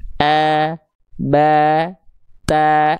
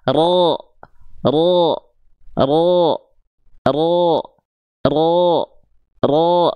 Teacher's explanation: Karena ada organ yang naik, dia tegang ke atas. Sehingga vokal A yang keluar, jalurnya kehalangin sama pangkal lidah, sehingga outputnya udah berubah lagi, nggak vokal A murni, tapi O. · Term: huruf tebal